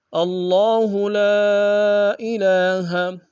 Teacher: حسیبا وقفا حسیبا، اللہ لا الہ، اللہ میں حمزہ کو لفظ اللہ کے لام کے سامنے آنا ہے، شد زور دیں گے، کھڑا زبر ایک انداز میں کھینچیں گے، لام میں الف مدہ ہے اور مد منفصل ہے، کم سے کم 2 الف میں کھینچیں گے۔ الہ میں لام کے اوپر کھڑا زبر ہے ایک انداز میں کھینچیں گے۔